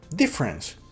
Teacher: la doppia F non si pronuncia si pronuncia come se fosse una sola